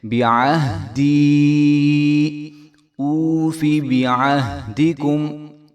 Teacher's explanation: نہ ہی با کو لمبا کریں گے اور نہ ہی ہم عین کی جگہ حمزہ پڑھیں گے، بلکہ عین کی آواز بھی آنی چاہیے اور با کو بھی ہم لمبا نہیں کریں گے۔